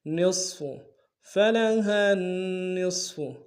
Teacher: ساتھ ملانا ہے، نون کے اوپر تشدید زور دیں گے، فلحن، نون کو صاد کے ساتھ ملانا ہے، صاد کو موٹا ادا کریں گے